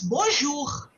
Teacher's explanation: So here what happens is the R sound should come from your throat